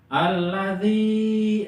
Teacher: nah ya mati setelah kasroh 2 harokat. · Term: mad tabi'i